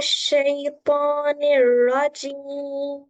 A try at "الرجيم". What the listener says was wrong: জিমের আওয়াজটা খেয়াল করেন জিমের আওয়াজ রজিম রজিম হয়ে যায় বাতাস বের হবে না রজিম আর একটু ট্রাই করেন أعوذ بالله من الشيطان الرجيم